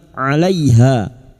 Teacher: ha fathah diguti alif dua harakat mad thabii